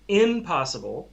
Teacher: m ends with your lips pressed together, p starts with your lips pressed together and then kind of exploding outward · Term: assimilation